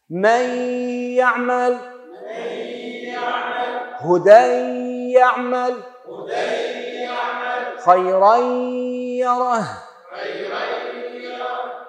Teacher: ادغام ناقص. ها بغنة، بقاء ذات الحرف أي النون أو التنوين وبقاء صفته، مقدار حركتين باللفظ.